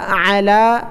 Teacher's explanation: عین کو گلے سے نکالیں